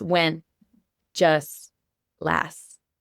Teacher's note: We're not actually saying the T at the very end.